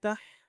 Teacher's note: ہا کو پراپرلی گلے کے اوپر والی سے آواز نکالنی ہے